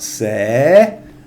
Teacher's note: The consonant's an S consonant. It's a live syllable, and it's a high-class consonant, so it's a rising tone.